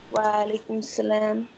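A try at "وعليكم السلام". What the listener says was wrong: There is a shadda on scene. We have to join it with previous vowel, which is on me. Wa alaikum assalam.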